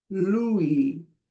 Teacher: If you see L UI, Louie, make the two vowels sound like one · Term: two vowels together